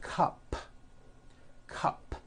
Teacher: it ends with an unvoiced P